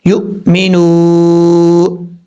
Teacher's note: واؤ ساکن سے پہلے پیش ہو تو واؤ مدہ ہوگا، ایک الف کی مقدار لمبا کر کے پڑھا جائے گا۔ یہاں واؤ ساکن ہے، اس سے پہلے پیش ہے، ایک الف کی مقدار اس کو لمبا کریں گے، یو مینو، اس طریقے سے۔